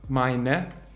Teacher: Die reduzierten Formen von mein sind meine. Hier sagen wir das E als E-schwa am Ende